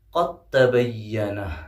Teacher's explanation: قاف کو ڈائریکٹ جو ہے تا میں ملا دیں گے اور دال ہمارا حذف ہو جائے گا